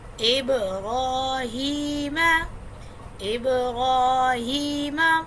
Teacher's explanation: یہاں پر ہم نے یا مدہ تھا تو اس کو میں ایک الف کے برابر کھینچا